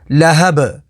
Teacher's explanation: آگے وقف لہب، وقف تام کی وجہ سے با کو ساکن کر دیں گے۔ با حروف قلقلہ میں سے ہے تو یہاں پر قلقلہ ہوگا